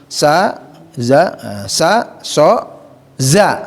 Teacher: ujung lidah bertemu dengan gigi seri